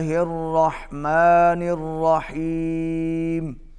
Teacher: الرحمن الرحیم اس کا ابھی جو کھڑا زبر ہے اس کو زیادہ لمبا نہیں کرنا